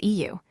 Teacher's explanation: instead of rounding your lips into a circle pull them wide and flat as if smiling. That flat unrounded u is eu.